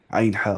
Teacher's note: आइन हा पढ़ना है centre, central portion of throat, mid portion of throat से, आइन हा वस्ती हलक से।